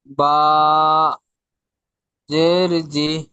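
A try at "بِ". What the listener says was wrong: জি নয়, বা, জের বি।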